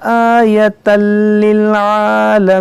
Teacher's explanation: यहाँ पर ये अलिफ मद्दा है और यहाँ पर देखेंगे छोटा मद्द है, ये मद्दे मुनफसिल है, इसको भी खींचेंगे। यहाँ तनवीन के बाद लाम, यहाँ पर इदगाम होगा बग़ैर गुन्ना के